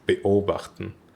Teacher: So it's not beobachten, it's beobachten. It's the vocal cords have to close after the first syllable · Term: glottal stop